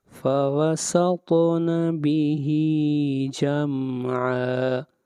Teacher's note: طا کے اوپر قلقلہ ہوگا، آواز کو ہلائیں گے۔ فَوَسَطْنَ بِهِ جَمْعًا، بِهِ، ہا کو کھینچ کر پڑھیں گے ایک الف کے برابر۔